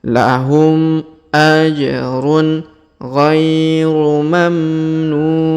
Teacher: ajrunir huruf diayun sekali karena terdapat Ya Sukun di depannyaun mamnun huruf NU kita panjangkan boleh dua harakat boleh empat boleh enam harakat